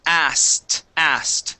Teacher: we drop the K. The K is not pronounced